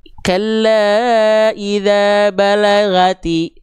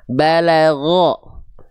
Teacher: Huruf ghain itu ketika dia berharokat baris atas akan cenderung terdengar seperti vokal O. Seperti vokal O ya, bukan betul-betul vokal O.